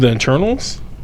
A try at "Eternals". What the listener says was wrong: The internals? You sound like you said internals.